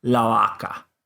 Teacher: if you put the article in front of it and say the cow, then you say la vaca, and your lips don't touch. La vaca, because of the a from the previous word.